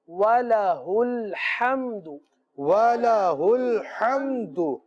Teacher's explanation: وَلَهُ میں ہا جو سینے سے متصل حلق سے ادا ہوتا ہے، اور آگے جو ہا ہے وہ وسط حلق سے ادا ہوتا ہے، دونوں کی مخرج جو ہے جدا جدا ہے، ادائیگی میں بہت زیادہ فرق ہونا چاہیے۔